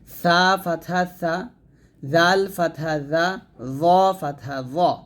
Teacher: আগা থেকে হবে অর্থাৎ জিহ্বার আগা উপরে দাঁতের আগার সঙ্গে লাগিয়ে আমরা সা জাল জ উচ্চারণ করবো